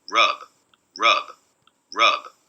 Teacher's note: final rub rub rub so again we have this single vowel it ramps down into near silence maybe the voicing actually dies out entirely and then there's this release which looks like a voiced release yeah and so that's uh again looking very different than the